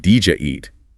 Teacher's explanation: the final D of did often merges with the initial J sound of you to create a D sound like in judge. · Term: Assimilation